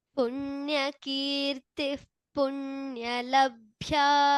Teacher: So after Punyakirti, there is a Visarga and then we have Pa. So the Upadhmaniya will replace the Visarga here.